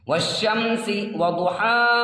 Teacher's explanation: کھڑا زبر کو تھوڑا کھینچ کر پڑھیں گے اور رکیں گے ، اس کو یہاں رکیں گے تو الف مد کی طرح